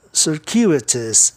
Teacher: A sílaba tônica fica no U, DCU, tá? Aí o ditongo UI passa a ter o seguinte som, circuitous.